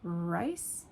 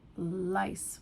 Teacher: if you speak Japanese, Korean, Chinese, you probably merge the R and L sound. That means that they are pretty much one and the same.